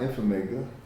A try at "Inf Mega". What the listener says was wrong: Is it Info Mega? No, it's not Info Mega. It's Inf Mega.